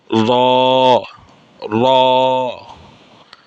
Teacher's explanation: জিহ্বার আগার উল্টা পিঠ আর কি। জিহ্বার আগার যে পিঠ, এই পিঠ তার বরাবর উপরের তালুর সঙ্গে লাগাইয়া র, মানে জিহ্বাটাকে একটু ব্যান্ড করে উচ্চারণ হবে